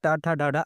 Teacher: आपकी जीभ फोल्ड होकर मूर्धा में टच होती है। इसलिए इनको मूर्धन्य बोलते हैं।